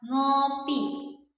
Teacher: dia tergolong ke dalam bunyi nasal. Udaranya keluar melalui rongga hidung